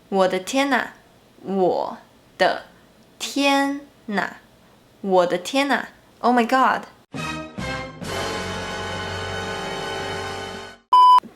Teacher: When “啊” is placed after the “-n” sound, in connected speech, the “n” sound connects with the “a” sound, so it becomes “哪”.